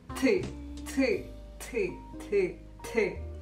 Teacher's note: поляки произносит как бы с придыханием то есть если мы говорим т то у них будет а